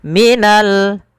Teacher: ada alif lam yang bertemu dengan huruf Jim yang mana Jim termasuk daripada huruf Qariah maka kita perjelas huruf lamnya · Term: alif lam Qariah